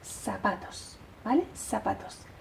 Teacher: los sonidos c o zetas se transforman en s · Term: seseo